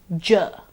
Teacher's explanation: We have learned that it is a voiced palato-alveolar affricate, j.